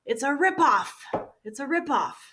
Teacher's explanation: we need a strong stress on the first word, ripoff.